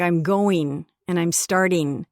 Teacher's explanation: the ing endings would be een